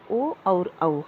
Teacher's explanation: ओ और औ कंठोष्ठ वर्ण है, क्योंकि ये कंठ और ओष्ठ की सहायता से बोले जाते हैं। कंठ के द्वारा जीभ और होठों के कुछ स्पर्श से बोले जाने वाले वर्ण ओ और औ है